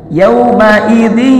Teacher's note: bunyi n-nya dilebur, diidghamkan, diidkhalkan, dimasukkan ke dalam huruf ya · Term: idgham bigunnah